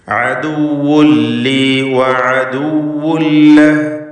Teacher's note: പൂർണ്ണമായും തൻവീൻ ഇല്ലാതാവുന്നു, പിന്നെ ഷദ്ദുൽ ലാമാണ് ഉച്ചരിക്കുന്നത്. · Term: ഇദ്ഗാം ബിഗൈരി ഗുന്ന കാമിൽ